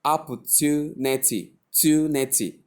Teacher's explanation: Not ch, but t, with the y sound attached to it to produce to opportunity.